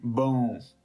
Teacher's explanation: instead of saying the word bone to completion, we're going to stop right before we complete the N sound. Notice how you say N. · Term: nasal sound